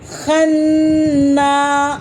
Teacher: الف سے پہلے زبر ہے، ایک الف کے برابر کھینچیں